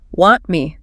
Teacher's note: The T in want is almost always unstressed or just dropped entirely in natural speech, the flat T.